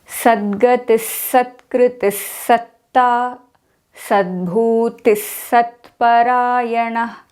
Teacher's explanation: Since the visarga in the first word sadgati is followed by sa, the visarga changes into s sound.